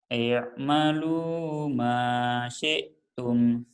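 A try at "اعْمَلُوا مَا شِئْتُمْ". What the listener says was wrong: Ya, shinnya nggak keluar. Syi'tum ya.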